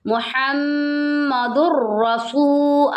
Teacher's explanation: رہا ہے غننے والا ادغام نہیں ہو رہا دو ادغام ہے بغیر غنہ ادغام ہو رہا ہے یہاں پر ہم غنہ نہیں کریں گے